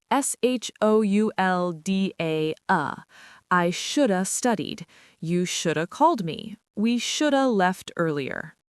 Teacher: In fast, casual conversation, native speakers drop the V sound entirely. Should've turns into shoulda.